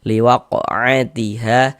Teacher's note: Ha dibaca panjang. Mad'i panjang dua harakat.